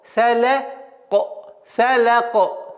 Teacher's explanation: Каф переходит в сукун. И каф является звуком калькаля, взрывным звуком.